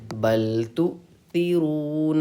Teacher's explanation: حمزہ ساکنہ کے پڑھنے میں جھٹکا ہوتا ہے، تو یہاں پہ ہم جھٹکے سے پڑھیں گے۔